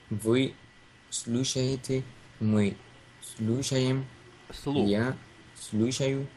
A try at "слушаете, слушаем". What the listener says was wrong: Слу. It's like у, not you, but у. У, слуша, слу. Слушаете, слушаем.